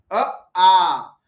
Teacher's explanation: जैसे ही आप अ के बाद आ बोलोगे जीभ पीछे सरकती है